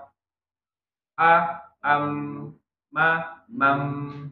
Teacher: Suaranya tidak terlalu mengalir. Ya. Suaranya enggak tertahan, enggak juga mengalir, tengah-tengah. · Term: tawasud bainiyah